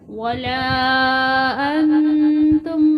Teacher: ولا انتم، انتم نون پر گنہ کیا جائے گا